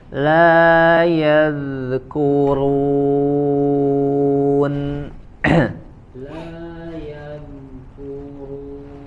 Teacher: Huruf dzal sukun mengalir ya, suaranya mengalir. La diarilkan suaranya.